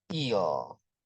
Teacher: the sound in eel is what we call a dark L.